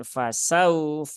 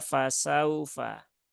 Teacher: wau sukun yang didahului harakat fathah maka huruf Lin itu dia dibaca dengan lembut ya jangan dipaksakan jadi jangan fasauadu tapi cukup biasa saja fasaufa